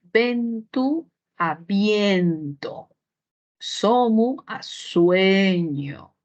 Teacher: son vocales e o breves y tónicas pasaron a ser diptongos en castellano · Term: diptongación